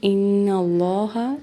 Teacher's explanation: نون پہ غنہ ہوگا اور اللہ تعالیٰ کے لام کو موٹا پڑھیں گے